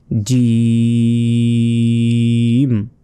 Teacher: জিম অনেকে বলি জিম জিম নয় জিম জিম মোটা ভাবে শক্তভাবে জি হবার যে মধ্যভাগ আছে ওটি উপরের যে তালু রয়েছে তালুর সাথে লাগিয়ে এই জিম অক্ষরটি উচ্চারণ করতে হবে